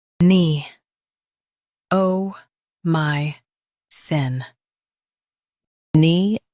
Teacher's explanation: Emphasize my and soften cin.